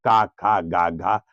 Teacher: जीभ का पिछला हिस्सा और तालु का पिछला हिस्सा एक में स्पर्श कराते हुए और हवा को जो बाहर निकाला तो क, ख, ग, घ वर्ग बन गया। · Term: का वर्ग